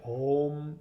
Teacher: you think it's an M, right? It's not. It's an NG sound.